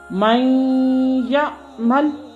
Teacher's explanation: جیسے من یعمل، اب دیکھیے من یعمل میں یا حرف ادغام تھا اور ما قبل نون ساکن آیا تو یا نے نون کو اپنے اندر مدغم کر لیا۔ اب نون لکھا تو جائے گا مگر پڑھنے میں نہیں آئے گا۔